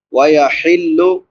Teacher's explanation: چھوٹی حا ہے، حلق کے درمیان سے ادا ہوتی ہے۔